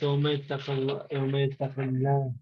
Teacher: the Laam of Allah is pronounced lightly with an empty mouth when the last letter of the word prior to Allah has a kasra